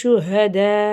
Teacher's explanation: மிம் மிஸ்லிஹி வதுஉ ஷுஹதா இந்த இடத்துல அலிஃப் மேலே பெரிய மது இருக்குது, 5லேருந்து 7 அலிஃப் வரைக்கும் நல்லா நீட்டி ஓதணும்